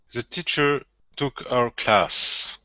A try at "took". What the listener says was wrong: Open your mouth just a little bit more. Instead of took.